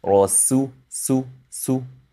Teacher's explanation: You need to push your lips forward, not for the Sin, but for the Dhamma sound of the Sin.